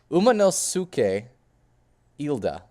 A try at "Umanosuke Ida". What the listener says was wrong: Close enough. Umanosuke Ida. It starts with 2 I's, not an L and an I.